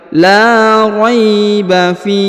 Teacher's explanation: huruf Fi dipanjangkan boleh dua boleh empat boleh enam ya karena di depan huruf Fi terdapat ya sukun atau ya mati